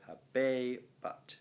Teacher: Now, hexameters always end either da-da or da-di, so habebat, right, the E must be long and the A of habebat, well, it's pronounced short